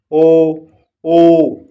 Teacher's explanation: कंठोष्ठ। कंठ और होठों के उपयोग से बोले जाने वाले वर्ण, जैसे ओ, ऊ।